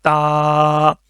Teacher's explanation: زبان کی جو نوک ہے وہ اوپر والے جو دانت ہیں اس کی جڑ کے ساتھ لگے گی